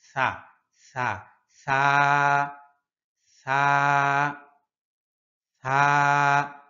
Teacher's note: সা সা সা সা সা, পাতলা করে উচ্চারণ করতে হবে। জিহ্বার আগাটা সামনের উপরের দুই দাঁতের আগার সাথে লাগবে